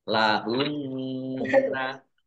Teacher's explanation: nun tasdid dibaca hunna atau mendengung ditahan 2 harokat